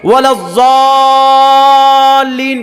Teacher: کم سے کم 4 الف 5 الف اس کو کھینچتے ہیں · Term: مد لازم حرفی مثقل